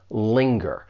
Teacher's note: When you pronounce this verb, it has two syllables. The stress is on that first syllable